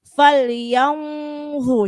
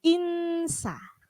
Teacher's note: ketika yang kedua nun sukun ketemu sin itu huruf tipis, maka ketika mendengung tidak perlu kita tebal, cukup insa.